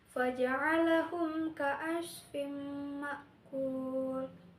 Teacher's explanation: Hukumnya itu idgham bigunnah karena tanwin bertemu dengan mim, dibaca masuk dengan dengung ditahan 3 harokat.